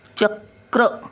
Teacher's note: कचा उच्चार पटकन पहिला येतो आणि रचा उच्चार नंतर येतो